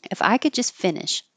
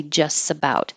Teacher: So we don't have to say the T here in just. We can drop it. It just makes it easier. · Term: drop the T